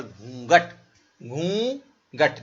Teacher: घूंघट, नाक से जरा घूंघट नहीं होता, घूंघट नहीं, घूंघट नहीं, घूंघट। नाक और मुंह दोनों से जब उच्चारण आपका होगा तो सही होगा